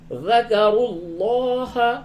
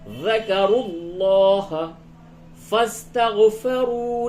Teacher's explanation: را کو پر کریں گے، را کے اوپر پیش ہے ، اور لفظ اللہ کے لام کو بھی پر کریں گے